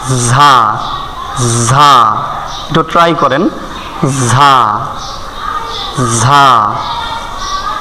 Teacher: ঝা, ঝা, ঝা, ঝা উচ্চারণ কিভাবে হয়, জিহ্বার আগা নিচের দাঁতের গোড়ার সঙ্গে লাগাইয়া, নিচের দাঁতের গোড়ার সঙ্গে লাগাইয়া ঝা, ঝা একটু ট্রাই করেন ঝা, ঝা।